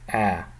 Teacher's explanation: So this is a open long A sound.